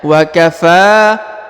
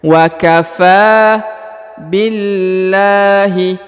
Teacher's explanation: huruf Fa dipanjangkan dua harakat karena di atasnya terdapat Alif kecil